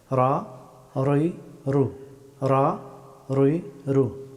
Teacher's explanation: রা হরফটি উচ্চারিত হয় জিহ্বার সামনের অংশের পিঠ এবং সোজা উপরের তালুর শক্ত অংশ ছুঁয়ে